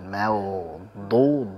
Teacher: ma-nya tipiskan, wa-nya alirkan, mau du, du tebalkan